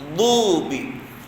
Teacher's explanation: Ghairil maghdubi alaihim huruf dad, hujung lidah sentuh belakang geraham kiri.